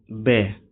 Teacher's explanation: ओष्ठ्य, स्पर्श, अल्पप्राण और घोष